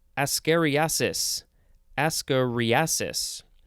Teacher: the emphasis is on the re right in the middle